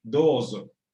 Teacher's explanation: La Z no es ni la del español ni la del español de España, no es, sino más bien un zumbido